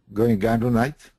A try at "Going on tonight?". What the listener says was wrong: Okay, you got to get rid of the G. There's no G here.